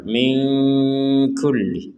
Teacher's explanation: Nun sukun bertemu kaf kita baca dengan samar